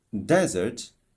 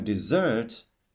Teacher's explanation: desert, the stress is on the first syllable, while dessert on the second syllable.